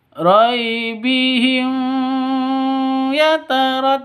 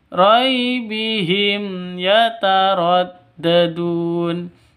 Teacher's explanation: izhar syafawi tidak boleh dengung tidak boleh di sentak